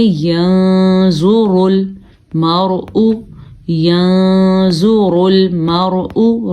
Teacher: نون حروف یہاں پہ نون ساکن کے بعد زوا ہے تو اخفاء ہو رہا ہے. اخفاء کا مطلب ہے نون کو ہلکا سا چھپائیں گے اور تھوڑا ناک میں آواز لے جائیں گے